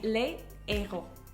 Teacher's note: if you have the words les and héros, the H is aspiré, so you're not going to make the liaison. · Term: H aspiré